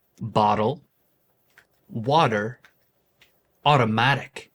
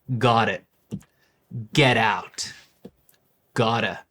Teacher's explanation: In American Standard, the T in the middle of words often become a flap, which is a quick, soft sound similar to a D sound. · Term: flap T